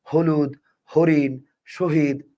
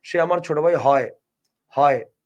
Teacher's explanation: হয়ের উচ্চারণটা হচ্ছে অঘোষ অল্প প্রাণ। হয়ের উচ্চারণ হচ্ছে অঘোষ অল্প প্রাণ।